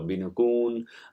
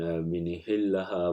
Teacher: there is a vowel I is inserted between the prefix and the verb itself